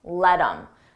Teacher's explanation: Notice again, I take that H off of him, I drop the sound, and then I'm left with im